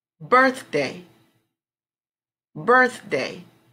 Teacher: the strong syllable would come over birth